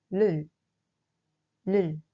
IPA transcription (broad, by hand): l